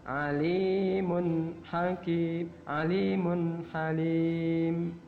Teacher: Tanwun bertemu dengan ha, maka dibaca alimun hakim, alimun halim. Dibaca alimun halim. Ya. Dan tidak boleh dengung. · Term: idhar